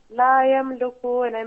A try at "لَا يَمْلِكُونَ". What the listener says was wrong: Look again at the word لا يملكون. There is a kasra beneath the lam. It is not a dhamma. So it is لا يملكون.